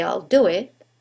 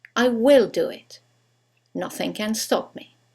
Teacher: when we use the contraction there is no stress on the contracted form